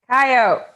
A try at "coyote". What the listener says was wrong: That's coyote. You pronounce the E, you hills have eyes haver.